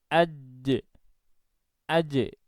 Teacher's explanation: ketika nanti ternyata jimnya bersukun, maka nanti yang akan muncul adalah bunyi pantulan. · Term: qalqalah